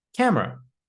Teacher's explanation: A lot of students pronounce it like, Kamera. but we shouldn't pronounce the E in the word camera. It's just camera.